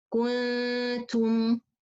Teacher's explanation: It's not with dhamma. Some people, when they make the ghanna, they keep the dhamma from the kaf to the ghanna.